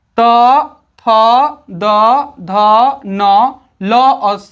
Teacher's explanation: इन सभी वर्णों का उच्चारण दंत्य से होता है, दांत से होता है